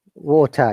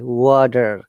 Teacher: in British IPA we pronounce it letter T is a strong T, whereas in Americans pronounce it like a flap T. We call it D.